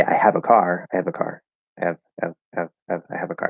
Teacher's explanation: I can drop the H